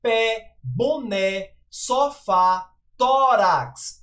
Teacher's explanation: percebem como a gente abre bem como ela é pronunciada com abertura